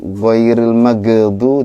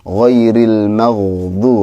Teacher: Pertama huruf ghain itu bukan ghairil maghdu, jangan mantul, tapi itu huruf ghain, ghairil maghdu, harus mengalir ya. Karena huruf ghain itu tidak punya sifat qalqalah. Dia punyanya sifat rokhawah. Rokhawah itu mengalir suaranya.